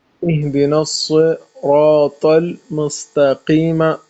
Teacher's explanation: صاد اور طا، صراط میں ان دونوں کو منہ بھر کے پڑھنا ہے، اور آپ کو بھی منہ بھر کے پڑھنا ہے، اور پھر مستقیمہ میں سین کو باریک پڑھنا ہے، ٹھیک ہے، اور قاف کو منہ بھر کے پڑھنا ہے۔